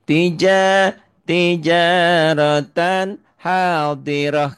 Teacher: Karena tak marbutah ya bunyinya jadi ha dan apapun tandanya semua jadi sukun.